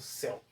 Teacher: Por que eu tenho um ditongo? Porque eu tenho um encontro de uma vogal e uma semivogal na mesma sílaba